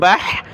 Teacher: ہا کو گلے سے نکالیں، بح، را کو موٹا کیا